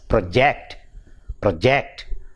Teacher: a noun the stress is on the first syllable project whereas if it is used as a verb verb the stress shifts from the first syllable to the second syllable